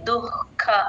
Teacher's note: ఖ కి మహాప్రాణం యూజువల్ గా వదిలేస్తూ ఉంటారు ఇది కొంచెం అందరూ బాగా ప్రాక్టీస్ చేసుకోండి దుః ఖ హెచ్ సౌండ్ వినిపించాలి